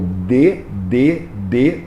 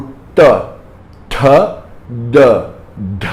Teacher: E aqui o T, T, D, D são a mesma coisa. Em vez de você encostar a língua na ponta do dente, você encosta a língua no céu da boca. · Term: cerebral